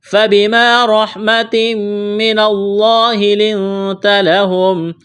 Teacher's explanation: فَبِمَا، الف مدہ ہے، ایک الف کے برابر کھینچنا ہے، را کے اوپر زبر ہے، را کو موٹا کریں گے، تنوین کے بعد میم مشدد ہے، ادغام کریں گے، غنہ کریں گے، آواز ناک میں چھپائیں گے۔ فَبِمَا رَحْمَةٍ مِّنَ اللَّهِ لِنتَ لَهُمْ، لفظ اللہ کے نام سے پہلے زبر ہے، لفظ اللہ کے نام کو موٹا کرنا ہے، یہاں پر اخفا کریں گے، نون ساکن کے بعد تا ہے، جب یہاں پر وقف کریں گے تو سیم پڑھیں گے۔